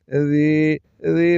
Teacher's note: یا ساکن سے پہلے زیر ہے تو یہ یا مدہ ہے ایک الف کے برابر کھینچ کر پڑھیں گے ذی ذی پڑھنا ہے زی نہیں پڑھنا وگرنہ